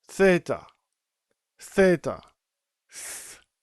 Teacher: It's similar to the th in the sound think. And um it doesn't have any voice to it.